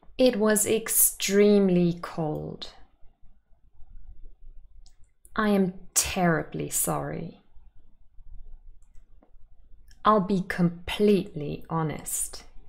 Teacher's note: we often Place emphatic stress on intensifiers